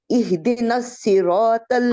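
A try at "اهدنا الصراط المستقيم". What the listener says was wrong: अब आपकी हा हिल रही है, हा को ठीक करें, हा को हिलना नहीं चाहिए, मखरज से बाहर नहीं आना चाहिए। एह दी,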